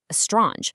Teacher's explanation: their brain automatically fixes the structural violation by adding an E at the beginning